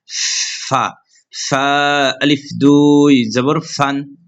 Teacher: ফা হরফ জিহ্বার সামনে উপর দুই দাঁতের আগা, নিচে ঠোঁটের পেট